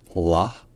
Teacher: un L qui est long, de 1, qui est emphatique de 2, c'est-à-dire que l'arrière de la langue est un peu relevé, donc ce n'est pas juste la, c'est la.